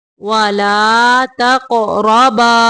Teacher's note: قاف کو موٹا کرنا ہے، قلقلہ بھی کرنا ہے اور را کو بھی موٹا پڑھیں گے.